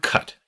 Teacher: In the word cut, your tongue comes up in the back to meet your soft pallet